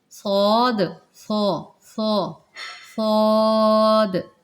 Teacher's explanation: صاد جو ہے اس کو باریک نہیں کرنا، یہ مستعلیہ ہے، اس کو موٹا پڑھنا ہے۔